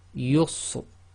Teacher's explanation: You really need to listen to a professional Qari to see it, because sometimes the Ra is almost not audible.